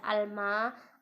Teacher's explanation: Lalu ada alma, ada al di sini al qamariyah karena alnya dibaca jelas.